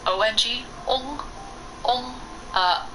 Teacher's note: it's not a short O sound like a lot of people default to as English speakers. It's really a long O sound.